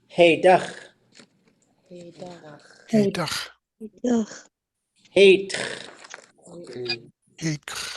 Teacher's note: The vowel goes long and it's high in every single one of these.